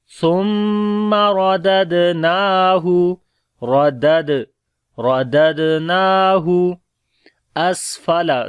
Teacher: ثم سا کو نرم پڑھیں گے، میم کے اوپر شد ہے غنہ کریں گے، را کو موٹا پڑھیں گے اور دوسری دال کے اوپر قلقلہ کریں گے جو کہ کمزور قلقلہ ہوگا. نون کو لمبا کریں گے، اس کے اوپر کھڑی زبر ہے.